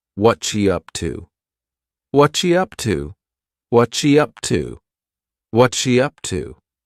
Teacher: what are has just been smooshed together